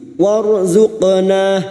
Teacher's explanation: Ra sukun yang didahului fathah kita baca tafkhim.